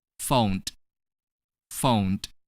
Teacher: The ending sound of phone is n. Next, when we add ed to the verb phone, which has the ending sound n, we're going to pronounce ed as d.